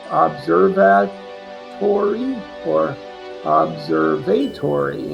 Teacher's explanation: the A wasn't exactly short A, it had more of a short O sound